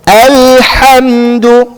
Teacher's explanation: Because a lam isn't a letter of qalqala. A lam isn't a letter that we're supposed to be jumping around on, right? So it's supposed to be completely flat.